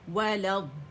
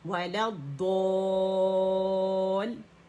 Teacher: اس کی ادائیگی یہاں اجتماع ساکنین بھی ہو رہا ہے، یہ الف گر گیا، حمزۃ الوصل گر گیا، لام ضاد میں جا کے، کیونکہ لام شمسیہ ہے اس میں جا کے مرج ہو گیا، تو یہ لام ویسے لام کی شکل میں نہیں پڑھا جا رہا، ضاد کی شکل میں پڑھا جا رہا ہے